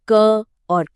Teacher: जब हम क और ख कहते हैं तो ध्यान दीजिए कि यह ध्वनियां सीधे हमारे गले यानी कंठ से निकल रही हैं। यह इनका एकदम सटीक फिजिकल ओरिजिन है। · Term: कंठ्य ध्वनियों